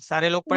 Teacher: ऊपर के सामने वाले दांत, नीचे वाले होंठ के तरी वाले हिस्से को टच करेंगे तो फा अदा होगा।